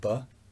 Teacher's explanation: but you can see my lips joining together two lips so the two lips come together and for a moment stop the air but then it's released so in this case the obstruction comes from two lips top